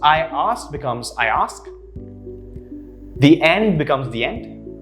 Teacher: the vowel sounds the ending and the beginning come together and they are linked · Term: vowel and vowel linking